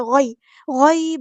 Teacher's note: یہاں پہ یا ساکن سے پہلے زبر ہے تو مدلین اور نرمی سے موڑنا ہے